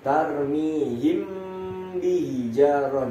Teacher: Tapi kalau disamarkan langsung ke huruf ba, dia berbunyinya udah dipersiapkan di mulut itu huruf ba. Jadi huruf ba-nya itu udah disiapin ketika dia mendengung. · Nah, huruf mim sukun bertemu dengan huruf ba ini dinamakan adalah ikhfa syafawi. Dibacanya adalah mendengung dan menyamarkan huruf selanjutnya